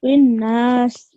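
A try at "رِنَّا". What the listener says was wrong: You need to be mindful. You elongated the alif, fine. But because of this shadda on the noon mushaddid, you need to sit on this for 2 seconds. So it's rinnas.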